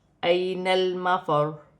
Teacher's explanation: را مشدد ہے، وقف کی صورت میں پیش گر جائے گی اور را ساکن ہو جائے گی